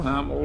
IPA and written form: ˈhæmɪl (Hamill)